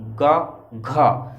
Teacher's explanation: गा में बहुत कम वायु आई होगी, घा में ज्यादा आया हो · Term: महाप्राण